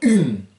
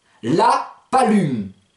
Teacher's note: Ça passe par le nez, vous entendez une. Vous faites ung, et vous enlevez le G au dernier moment.